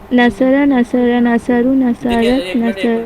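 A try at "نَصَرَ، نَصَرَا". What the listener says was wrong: نصرہ، نصرہ، نصرو. آپ نے پہلا نصرہ بھی نصرہ ہی کہا، دوسرا نصرہ بھی نصرہ ہی کہا، جبکہ دوسرے والے میں الف ہے. نصرہ، نصرہ.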